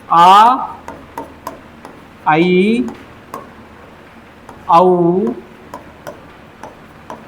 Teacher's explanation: जैसे अ इ उ ये हमारे हो गए एक मात्रा वाले ह्रस्व स्वर और इसके बाद आ ऐ औ ए और ऐ और औ और यह हमारा औ यह हमारे हो गए दीर्घ स्वर। इनके बोलने पर दो मात्रा का समय लगता है।